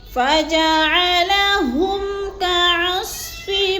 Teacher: فَجَعَلَهُمْ، ہم ہاں کو موٹا کرنا ہے، اور میم کے اوپر ہم نے غنہ نہیں کرنا، اظہار کرنا ہے